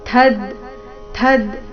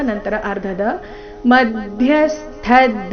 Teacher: ಪೂರ್ತಿ ಥ ಮಹಾಪ್ರಾಣ ರಸ್ವ